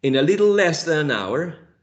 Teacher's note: little is stressed in the first syllable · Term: first stress syllable